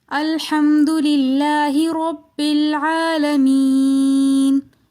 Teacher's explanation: رب العالمین میں را کو ہم موٹا پڑھیں گے کیونکہ را کے اوپر زبر ہیں۔